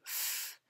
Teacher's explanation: You don't feel any vibration, so it's an unvoiced sound.